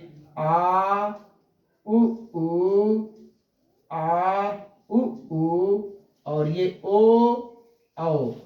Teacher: इनका उच्चारण स्थान पश्च भाग से होता है जबान के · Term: पश्च स्वर